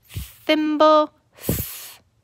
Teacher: This is the unvoiced digraph TH. It does not have a line through it, and we say thimble, th.